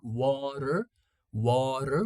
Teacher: In American English, we pronounce like water, water. We change the T into a flap T.